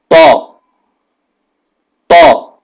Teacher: इसमें जबान ऊपर की तरफ उठ जाने से यह हर्फ पुर पढा जाता है मोटा पढ़ा जाता है · اس میں زبان اوپر کی طرف اٹھ جانے سے یہ حرف پر پڑھا جاتا ہے، موٹا پڑھا جاتا ہے اور بھاری